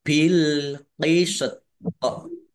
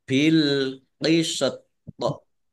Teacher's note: Jadi kalau wakof ya atau kalau berhenti toknya sukun maka dibaca kolkolah atau memantul